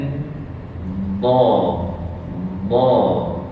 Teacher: tolak pergi yang lidah tu bukan hujung lidah tapi tepi lidah >> ke bahagian geraham.